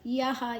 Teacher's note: ಯ ಆದ ನಂತರ ವಿಸರ್ಗದ ಉಚ್ಚಾರಣೆ ಹ